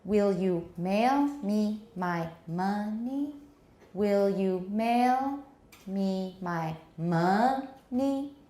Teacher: tonic stress is on ma. It's got a rising intonation.